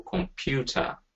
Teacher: So if I say, for example, computer, we know that computer, the first two sounds, the first sound and the last sound will be reduced sounds. Yeah, so then usually represented by the sound, the schwa.